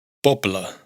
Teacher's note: Como he mencionado antes, los grupos BL y GL entre vocales, en la gran mayoría de los casos, se pronuncian de una forma en que la primera consonante se alarga o se dobla como si hubiera dos consonantes iguales e hiciéramos una pequeña pausa entre ambas